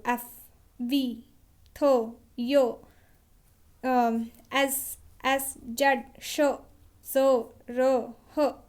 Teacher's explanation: कहीं ना कहीं आपको एक फ्रिक्शन लग रहा है, एक जोर लग रहा है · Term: फ्रिकेटिव्स